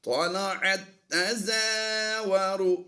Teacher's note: جزم والی تا کو ہم سائلنٹ کریں گے اور شد والی تا کو ہم ملا کر پڑھ دیں گے